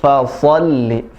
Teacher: Jadi li-nya pendek, so-nya tebal.